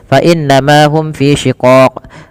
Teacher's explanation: inna ditahan suara bunyi n-nya sepanjang 2 harakat karena ia bacaan gunnah. Beberapa kesalahan yang terjadi tidak menahan gunnahnya, hanya lewat saja.